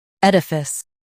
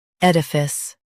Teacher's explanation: US says uh UK says i